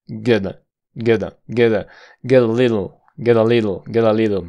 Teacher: hay una parada de consonante y flap